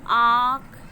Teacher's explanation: इसका उच्चारण नाक और मुंह दोनों से होता है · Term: अनुनासिक